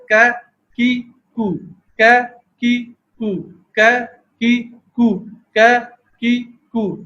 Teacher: تو کاف کی ادائیگی اس ایک چھوٹے سے کلپ میں دیکھیں کہ قاف کے مقابلے میں زبان کا کچھ تھوڑا سا جڑ سے متصل حصہ اوپر اٹھا اور تالو کے نرم حصے پر لگ گیا. اس سے کا کی کو، کا کی کو، کا کی کو، کا کی کو یہ آواز پیدا ہو گئی.